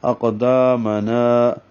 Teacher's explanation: وثبت اقدامنا میں قاف پر ہے موٹا کریں گے اور دال کے ساتھ الف ہے تو 2 حرکات لمبا کریں گے. نا کو بھی الف مدہ بنائیں گے 2 حرکات لمبا کریں گے